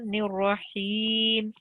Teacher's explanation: We shouldn't be saying Rahmanir Rahim. The elongation is only with the ya madda, and it's 2 seconds.